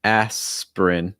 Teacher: Notice it goes right from the S right to the prin. Aspirin. So it's not aspirin.